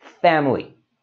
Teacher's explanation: And there you can see, it's got that middle I that we don't really need to say. So instead of saying family, we can just say this as two syllables, family. So you know now when you see it, say it quickly, family.